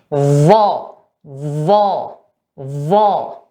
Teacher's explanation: Nah, yang membedakan adalah sifat yang ketiga ini dan sifat yang keempat, yaitu pangkal lidah naik ke langit-langit, sedangkan zal tidak naik ke langit-langit. Kemudian disifati juga sifat yang keempat adalah itbaq.